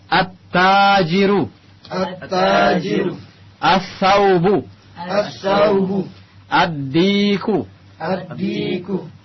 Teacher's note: Alif lamnya masuk ke dalam huruf setelahnya, melebur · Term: al-huruf Asy-Syamsiyah